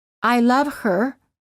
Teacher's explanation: the letter H is often silent in the words he him his her and hers when these pronouns are not the first words of a sentence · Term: silent h